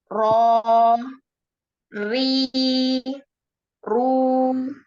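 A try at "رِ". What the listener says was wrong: Nah, ri-nya ketebelan. Tipis ya. Ri gitu ya. Ri biasa. Rini, Rika gitu ya.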